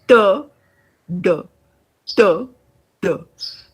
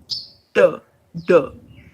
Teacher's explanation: articulated by the tip of the tongue curled back against the front of the hard palate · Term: retroflex